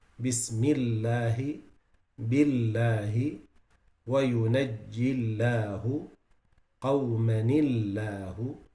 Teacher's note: jalala with kasra, it's always lowered.